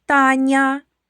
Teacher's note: м'який приголосний Нь перед буквою я